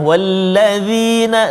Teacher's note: dzal hujung lidah keluar sedikit, kena pergi kacip atas